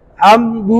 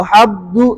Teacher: मीम के अंदर नाक में आवाज ले जाना है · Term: गुन्ना